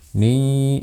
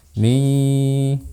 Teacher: Suaranya lebih dominan keluar di hidung dan keluarkan sedikit suara melalui mulut. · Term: ikhfa